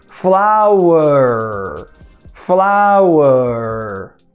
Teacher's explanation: Primeira sílaba é a tônica, flau. Segunda sílaba é a átona. Ou seja, o schwa vai estar lá.